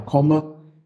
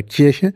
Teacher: Das K bei Komme ist hinten artikuliert, velar und nicht palatal, wie bei Kirche.